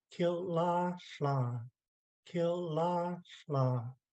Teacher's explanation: So the first two words are high tone. Kil, la, and then the last word is no tone, it's flat.